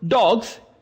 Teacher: Both words are plural. In the first word, dogs, here is S, gives the sound of Z